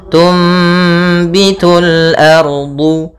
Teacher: Apabila ada nun sukun bertemu dengan huruf ba ya, maka kita namakan dengan iqlab, yaitu cara membacanya adalah suara nunnya diganti dengan suara mim. Maka di sini ditandai dengan mim kecil. · Tum ya dimatikan sambil ditahan gunahnya. Tum ya ditahan suara mnya. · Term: iklab